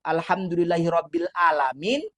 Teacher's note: Karena kita salah baca, salah mengucapkan makharijul huruf tadi yang seharusnya ain kita baca menjadi alif